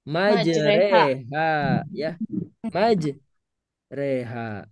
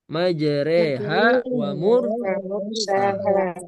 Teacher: Tulisannya majroha ya, tapi dibacanya Majreha. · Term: roimalah